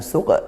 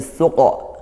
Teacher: bukan suq tapi suqa karena qafnya tebal.